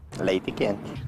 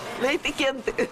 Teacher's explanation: Acaba sendo trocada pela letra I. São poucos os brasileiros que pronunciam o E, assim, bem falado, principalmente no final das palavras, como aqui na região de Curitiba. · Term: pronúncia E